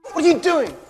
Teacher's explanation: What are you doing is a very common question in casual speech and all three words are pronounced as one chunk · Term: connected speech